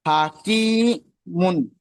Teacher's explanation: ইয়া সাকিমের যে ডান দিকে জের এসে, যেটা হচ্ছে এ, ইয়া, ইয়া ইয়া মাদ্দা বলা হয়। ইয়া মাদ্দাকে একালি পরিমাণ টান দিয়ে পড়তে হয়।